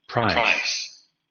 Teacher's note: Esa es la característica de los diptongos. No hay un momento de interrupción entre una y otra vocal.